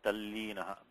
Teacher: This case we have a ta becoming la. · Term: nasalized la